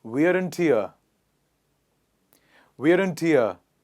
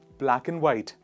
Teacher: the unstressed pronunciation of and, which comes with the help of the schwa sound